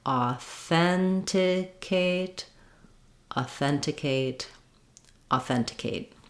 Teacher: you can also practice this by trying each syllable slowly just keep the rhythm of the word the same still stressing and stretching on the second syllable